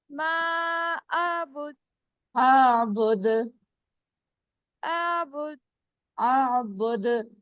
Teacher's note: दाल की आवाज टकरा कर वापस आएगी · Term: कलकला